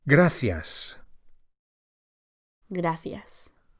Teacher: The C of gracias is pronounced as an English TH, as in thanks